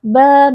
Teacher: karena kita wakaf pada fathatain sehingga harus dibaca dengan fathah panjang satu Alif atau dua harakat